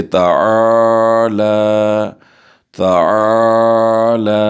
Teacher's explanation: پہلے عین پر زبر ہے، ہم الف مدہ کریں گے، اور لام کے اوپر کھڑی زبر ہم اسے 2 سیکنڈ تک کھینچ کر پڑھیں گے